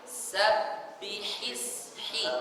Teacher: Ini makhrajnya ha ini di wasat, pertengahan, tengah tenggorokan. Jadi sabbihis hi, bukan sabbihi.